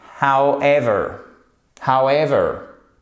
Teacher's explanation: Et vous avez même votre accent tonique sur la seconde syllabe.